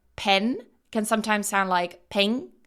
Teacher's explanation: One thing that Japanese learners or Japanese speakers tend to have problems with is the /n/ at the end of words, because in Japanese what they do, they'll pronounce it either at the back, like 'ng'